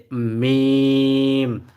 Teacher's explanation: ঠোঁটের শুকনো জায়গা হইতে মিম